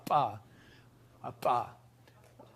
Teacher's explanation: There are bilabial ejective stops